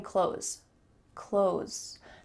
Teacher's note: There's not even a hint of a TH when we say it quickly.